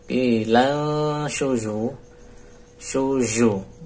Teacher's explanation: Nun ketemu syin ikhfa nunnya samar